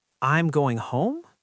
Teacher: if you use a rising intonation at the end of a statement, it sounds like you're unsure. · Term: uptalk